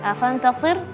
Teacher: Fantasir, jangan sir ya, jangan sin jadinya, karena sebenarnya adalah shad